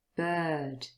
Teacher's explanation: It's one long sound in the middle. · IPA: /ɜ:/